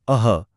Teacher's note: विसर्ग यानी अह में गले से ह जैसी आवाज निकलती है